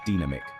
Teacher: with the stress on the second syllable